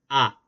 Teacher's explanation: A, no se redondean, ¿verdad? Entonces quiere decir que la A es no labializada, porque los labios no se redondean.